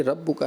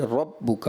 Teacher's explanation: रा मफ्तूहा है, यानी रा पर ज़बर है, तो उसको हमने पुर पढ़ना होता है